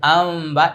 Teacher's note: নুন সাকিন এবং তানউইনের পরে যদি ইকলাবের হরফ বা থাকে তাহলে এই নুনের পরিবর্তে মিম পড়তে হচ্ছে তাহলে ছিল আন পড়তে হবে আম আর এটা চার আলিফ টান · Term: ইকলাবে গুন্নাহ